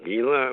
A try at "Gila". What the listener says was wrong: No, it's pronounced Gila. The G is like an H. Gila.